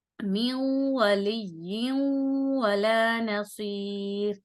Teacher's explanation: اب یہ دیکھیں، تنوین کے بعد بھی واو آ رہا ہے، یہاں پر دونوں دونوں چیزیں آ رہی ہیں، یعنی نون ساکن کے بعد بھی واو اور یہ دیکھیں تنوین کے بعد بھی واو، تو ان دونوں کو پڑھنے کا طریقہ بالکل سیم یہی ہوگا کہ ملائیں گے اور غنے کے ساتھ ملائیں گے، یعنی ادغام کریں گے مع غنہ